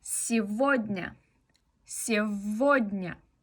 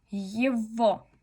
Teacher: G puede pronunciarse como V, especialmente en estos dos ejemplos. Normalmente se pronuncia como G, pero aquí decimos сегодня, сегодня, con una V.